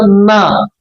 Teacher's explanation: ఇది దంతాల సహాయంతో, ఈ దంతాల సహాయంతో నా, నా అని చదవబడుతుంది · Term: దంత్య అనునాసికము